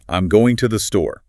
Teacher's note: Because in the phrase going to the store, the word going is your primary action verb. It is the downbeat of the jazz rhythm. So it has to carry the heavy stress.